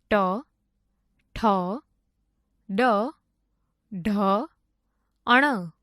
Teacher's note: જે વર્ણોનું ઉચ્ચારણ કરતી વખતે જીભને મોઢાના તાળવાનો સ્પર્શ કરવો પડે તેને મૂર્ધન્ય વર્ણો કહે છે